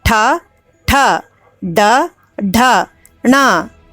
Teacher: This is grouped as ta vargaha and is pronounced with the help of murdhanyaha.